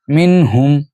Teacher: یہاں بھی نون غنہ نہیں کریں گے کیونکہ ہا جو ہے وہ حروف حلقی میں سے ہے